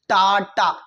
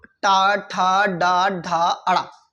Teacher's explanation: दांतों के हल्का से पीछे भाग को मूर्धा कहा जाता है, जिससे ये आवाज निकलती है टा टा। ये जुबान क्या जाती है, जाते ऊपर तालु में लड़ती है, लेकिन तालु के थोड़ा आगे लड़ती है, तो उसको कहा जाता है मूर्धा।